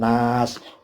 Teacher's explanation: Anin nas, ini nas panjang karena fathah ketemu alif, tapi sinnya sini ada waqaf, qaf lam, al waqful aula, maka sinnya tidak dihidupkan si, tapi dimatikan